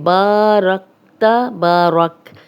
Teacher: با الف مدہ ہے، خالی الف، پیچھے با پہ زبر، 2 حرکات لمبا کریں گے